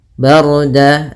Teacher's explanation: di sini ra-nya tebal yaitu ra takhim, karena sebelum ra sukun ada huruf berharakat fathah